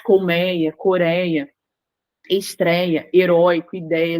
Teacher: tem esse ditongo aberto essa pronúncia aberta